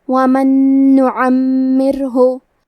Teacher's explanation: ادغام کا معنی ہے حرف کو حرف میں داخل کرنا، تو ہم نون ساکن کو دوسرے نون میں ملا کے ایک ہی نون غنہ اور تشدید کے ساتھ پڑھیں گے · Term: حروف الادغام بغنہ